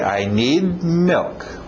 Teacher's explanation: Engole aquele D no final.